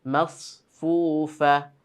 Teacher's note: সাদের মাখরাজ জিহ্বার আগা নিচের দাঁতের মাঝ বরাবর লাগবে, তাই না? মাসফুফা, তাহলে সদটাকে মোটা করতে হবে।